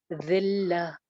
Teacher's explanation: ذال آ رہا ہے خیال کے ساتھ بغیر سیٹی کے